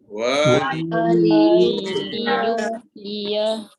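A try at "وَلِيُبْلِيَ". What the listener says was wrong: Tak dengar bunyi kokola. Sekali lagi. Waliyub. Yub. Seolah-olah ba itu baris atas. Waliyubliyah seolah-olah. Tapi bukan baris atas lah. Okey, sekali lagi saya baca. Waliyubliyah.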